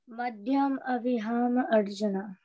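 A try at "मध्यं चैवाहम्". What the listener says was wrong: Madhyam Chaivaham. This is Cha. And we have this C sometimes, but it is pronounced as ch.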